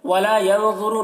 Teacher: نون میں اخفا ہوگا، اور ضا کو پر پڑھیں گے